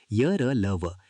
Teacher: य र ल व यांचा उच्चार स्वरांसारखा होतो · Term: अर्धस्वर